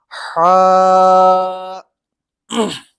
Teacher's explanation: ह जो है वो हलक से निकलता है यानी कि दरमियानी जो हमारा गला होता है वहां से आधा होता है। · تو ہا جو ہے وہ حلق سے نکلتا ہے، یعنی کہ درمیانی جو ہمارا گلا ہوتا ہے وہاں سے ادا ہوتا ہے، یعنی کہ جہاں سے آپ اس طرح کا یہ جو آپ ساؤنڈ سن رہے ہوں گے، مطلب ایسی آواز ہا کی ہوتی ہے، جیسے کہ ہا۔